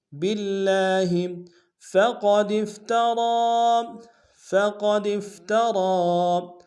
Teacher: قاف کو موٹا ادا کریں گے، دال کو فا کے ساتھ ملائیں گے، تا کو نم سے ادا کریں گے، را کے اوپر کھڑا زبر ہے اور مد منفصل بھی ہے، چھوٹا سا مد ہے، کم سے کم 2 الف انتظار میں کھینچیں گے۔